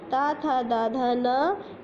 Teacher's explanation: जब हम बोलेंगे ता तो दांत के बीच में आती है ना हमारी जीभ। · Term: ता वर्ग